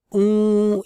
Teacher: आएगी तो वो ऊ इस तरह से सुना जाएगा यानी कि उ के ऊपर बिंदी यानी कि नाक में से हम उ का उच्चार करेंगे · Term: अनुस्वार